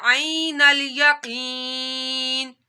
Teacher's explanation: یا ساکن سے پہلے زیر آ رہی ہے تو یا مدہ کرنا ہے